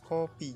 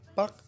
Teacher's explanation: Jadi kayak lepas. Kalau kopi itu berhembus dan kalau pak itu tertahan. Keduanya adalah alofon dari fonem yang sama yaitu K.